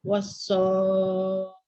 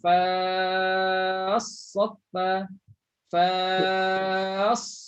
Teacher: Tak cukup kuat pada sad, tak cukup kuat tekanan pada sad. Tekan lagi.